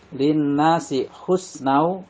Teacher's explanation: Lin nasi husnau, nau di sini nun tanwin bertemu dengan waw, dinamakan idgham bi gunah. Cara membacanya tanwin atau surat tanwin dimasukkan ke huruf waw dan ditahan 2 harokat.